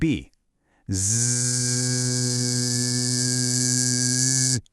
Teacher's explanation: Feel that little buzz, that vibration. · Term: Z sound